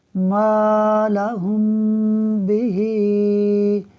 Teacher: میم الف زبر ما، لام زبر لا، مالا، ہا میم پیش ہم، مالہم، با زیر بی، ہا کھڑی زیر ہی، بہی، مالہم بہی۔ میم ساکن کے بعد حرف با آ رہا ہے، اخفاء شفوی ہوگا، یعنی میم ساکن میں غنہ کریں گے